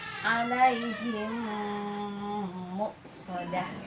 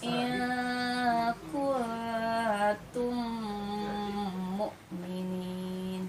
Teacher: Jadi ditahan ketika mim mati bertemu dengan mim ya.